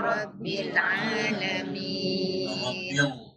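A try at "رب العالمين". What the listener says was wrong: Rabbil Alamin. Ada inhiraf dekat lam.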